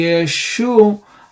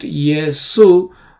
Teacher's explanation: there is no sh sound in Greek, only sa sound